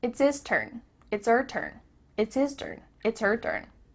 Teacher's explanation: The H at the beginning of his and her is cut off.